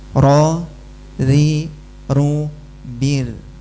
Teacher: Bukan hilang getarannya, tapi tipis getarannya.